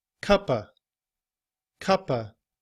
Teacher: So we say of. However, in reduced form, we often leave off the sound of the V. And we just use the schwa,